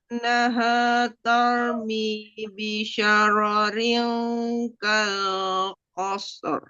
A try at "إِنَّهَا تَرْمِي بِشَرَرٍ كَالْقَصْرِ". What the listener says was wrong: Tahan 3. Kurang. Tadi masih kurang. Tambah sedikit lagi, jelaskan bunyi R-nya. Kal qasr. Kal qasr.